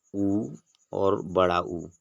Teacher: उ और बड़ा उ बोलने के लिए हम ओष्ठ का प्रयोग करते हैं